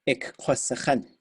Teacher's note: the positive future will, no matter what, all of them will be long and high